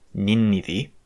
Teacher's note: the D eventually just melds with the N and becomes a geminate